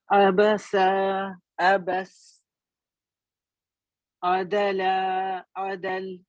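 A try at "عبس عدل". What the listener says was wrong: इतना ना खींचें. अबस अबस, अदल अदल जी.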